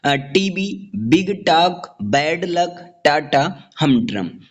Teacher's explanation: स्पॉन्डी दो stressed syllable से बनता है।